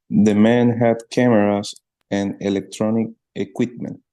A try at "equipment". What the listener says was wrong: Equipment, yes.